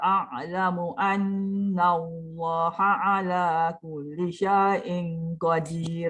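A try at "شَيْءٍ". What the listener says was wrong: Syai itu kena jelas betul-betul syai. Syai. Jangan syai, jangan separuh. Dia lidah tengah tu naik ke langit. Dia bunyi syai.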